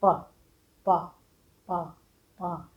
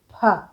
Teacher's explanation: पहला अक्षर बिना हवा के बोलना है, दूसरा वाला अक्षर मुँह से हल्की सी हवा निकलती है, तो आपका स्पष्ट उच्चारण हो जाता है।